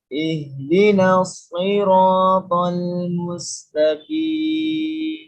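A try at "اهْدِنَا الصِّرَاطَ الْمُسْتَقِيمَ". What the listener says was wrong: Ya, langsung aja, Pak. Ihdinas, langsung. Ihdinas, jadi enggak ada jeda.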